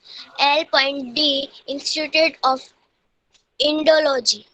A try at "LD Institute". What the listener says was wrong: L.D नहीं, LD इंस्टीट्यूट.